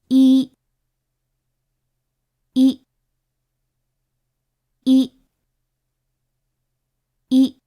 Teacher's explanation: Okada describes this as a high front vowel. Vance gives a similar description, noting that it has essentially the same quality as the vowel in me.